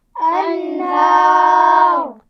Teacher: جو را ہے انہار میں اس کو وقف کرتے ہوئے موٹا پڑھیں گے